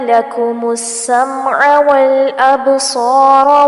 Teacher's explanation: با پہ کلکلا کیا جائے گا اور صاد کو پر کرنا ہے، را کو بھی پر کرنا ہے